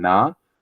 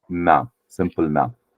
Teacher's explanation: So we need to differentiate between these two nas now, right? Like the other na, the tongue goes bit behind na, and this na, the tongue is in the dental level on the teeth